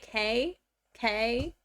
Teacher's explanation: the back of my tongue is like hitting the back of my throat